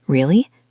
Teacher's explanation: If I say, Really? with a voice that goes up, I sound surprised or even happy.